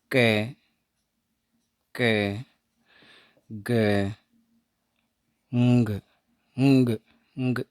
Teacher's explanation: इसमें जो active articulator है वो तो होगा अपना बैक ऑफ टंग। ठीक है, बैक ऑफ टंग। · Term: वेलर